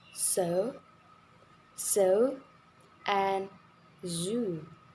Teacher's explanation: S and Z are alveolar fricatives with the friction created at the alveolar ridge.